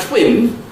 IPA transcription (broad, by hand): tʷɔːk